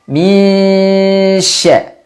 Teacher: Dibaca samar nunnya, lidah bersiap-siap untuk mengucapkan huruf shin. Ingat makhraj shin, yaitu dari tengah lidah.